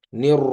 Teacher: را کو موٹا کیا ہے، اس را مشدد پر زبر ہے